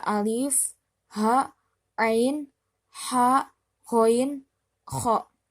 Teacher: Karena huruf-hurufnya tersebut adalah huruf-huruf yang keluar dari tenggorokan atau halk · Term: izhar halaki